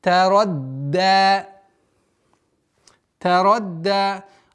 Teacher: Удваиваем, а потом даль сперва удваиваем. Если при произношении звука даль не будет давления на местонахождение звука даль, она перейдет в звук та. Тарадда. И поэтому нужно давить.